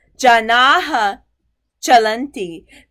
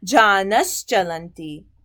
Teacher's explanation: And now going on to the examples. So that visarg becomes a sh before a cha and cha